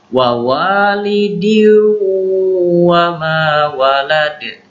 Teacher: Idgham bi gunnah, masuk ke wawu dengan dengung.